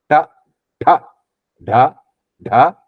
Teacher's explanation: So the tongue touches the front of palate.